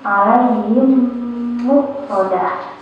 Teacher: Jadi kayak ada dua mim kan, ada dua mim ya, jadi bacanya tuh agak ditahan gitu mimnya ya, dan agak berdengung juga di hidung. Contohnya tadi lihat di sini ada mim sukun atau mim mati bertemu dengan huruf mim, depannya ada huruf mim lagi, maka dibacanya digabung dengan huruf mim yang di depannya kemudian berdengung ya. · Cara bacanya, mim sukun digabungkan dengan mim di depannya dan berdengung. Jadi kayak ada dua mim kan, ada dua mim ya, jadi bacanya tuh agak ditahan gitu mimnya ya, dan agak berdengung juga di hidung. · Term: idgham mim